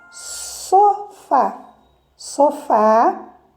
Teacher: está na última sílaba, o som mais forte